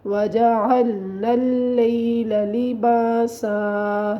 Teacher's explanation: سین میں سیٹی کی آواز آنی چاہیے۔